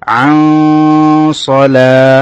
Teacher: নুন সাকিনের পরে সোয়াদ এসেছে সে কারণে নুনটা গুণা করতে হবে, ইখফার গুণা, আর সোয়াদ মোটা হরফ মোটা করে পড়তে হবে।